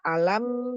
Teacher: Izhar syafawi dibacanya jelas mimnya